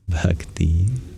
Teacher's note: So what we do is we charge up that B with aspiration. So there's like a little laugh that comes out when you say Bhakti. And yeah, it does sound like it's full of joy, and I think that's the reason there's such a symbolism in the breath we give this word.